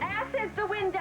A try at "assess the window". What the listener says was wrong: It's assess the window. You put the wrong emphasis on the wrong syllable.